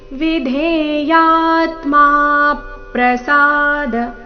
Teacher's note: ಮೂರನೇ ನಾಲ್ಕನೇ ಚರಣ ಒಟ್ಟಿಗೆ ಹೇಳಬೇಕಾದ್ರೆ ವಿಧೇಯಾತ್ಮ ನಲ್ಲಿನ ಮಾ ಮೇಲೆ ಆಘಾತ ಬರಬೇಕು